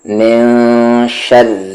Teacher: نون ساکن کے بعد شین ہے اور شین حروف اخفا ہے، تو یہاں پر من نہیں، میں ہائیڈ کریں گے نون ساکن کی آواز کو. من شر یہ را لائٹ ہوگا کیونکہ اس پر تشدید ہے اور زیر ہے.